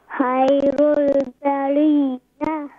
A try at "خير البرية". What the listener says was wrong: ما شاء الله۔ کوشش کریں کہ خا کو اور بھی مزید کلیئر کریں، باقی ماشاء اللہ آپ نے بہت پیارا پڑھا، بہت شکریہ جزاکم اللہ خیر۔ نیکسٹ کالر، السلام علیکم۔